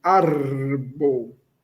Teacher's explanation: Lembrando que o r é vibrante.